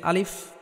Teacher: এই আলিফটি কোন টান হবে না